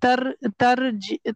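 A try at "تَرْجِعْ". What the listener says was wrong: नहीं, तरजिअ, तरजिअ साकिन हो जाएगा.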